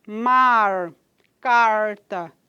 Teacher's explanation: classificado como retroflexo alveolar E vozeado então a produção dele se dá aqui na região dos dos dos alvéolos